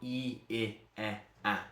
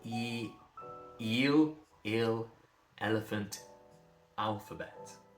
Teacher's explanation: the smiling vowels. Your tongue's pushed forward. E I E A. You just get lower. Eel ill. Elephant.